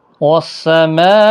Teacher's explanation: مد متصل ہے، 4 الف کی مقدار کے برابر کھینچ کر پڑھیں گے